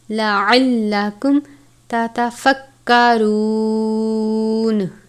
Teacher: میم ساکن ہے، اس کے بعد تا ہے، اظہار شفوی کا قاعدہ لگتا ہے یعنی میم ساکن پر غنہ نہیں کریں گے · اظہار شفوی کا قاعدہ لگتا ہے یعنی میم ساکن پر غنہ نہیں کریں گے، لَعَلَّکُمْ تَتَفَکَّرُونَ، یہ باریک والا کاف ہے، را واو پیش رو، واو ساکن سے پہلے پیش ہے واو مدہ، تَتَفَکَّرُونَ۔